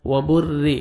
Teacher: را مشدد، اور جب زیر آتے ہیں تو را کو باریک پڑھتے ہیں